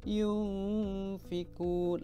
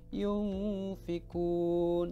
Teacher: Nah, nun sukunya itu disamarkan ke dalam huruf fa. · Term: ikhfa